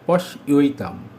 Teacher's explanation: পশ্য যুক্ত এতাম, পশ্যৈতাম। অ যুক্ত এ সমান সমান ওই, ঐকার। এই ঐকার তালব্য স্বরের সঙ্গে যুক্ত হলো, তাহলে হলো পশ্যৈতাম।